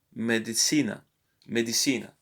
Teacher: You see the stress on the syllable before the last one.